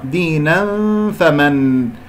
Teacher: فمن هنالك إخفاء مع الفاء، أذهب إلى مخرج الفاء